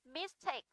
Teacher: Mistake trọng âm rơi vào âm đôi